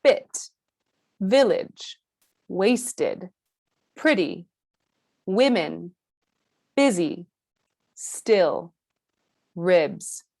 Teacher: The tip of the tongue is still touching the lower front teeth as always, and the tongue is still high, but it is slightly more relaxed than E. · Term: the sound I